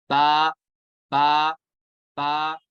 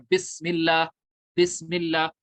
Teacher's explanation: बा में क्या होता है, दोनों होंठों का तर हिस्सा ये यूज होता है, दोनों होंठों के वेट पार्ट से याद हो।